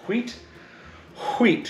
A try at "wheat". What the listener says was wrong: You're saying it weird. Why are you putting so much emphasis on the H?